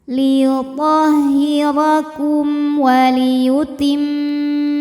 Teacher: Liyuthahira kum Kayak tadi sampai sini ya, kum Ini hukumnya idzhar syafawi, karena mim sukun menghadapi huruf selain mim dan ba. Maka mim sukun dibaca jelas.